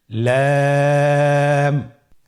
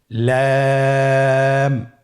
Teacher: লাম হরফটি উচ্চারণের ক্ষেত্রে অবশ্যই বারিক হবে এবং 3 আলিফ টেনে পড়তে হবে।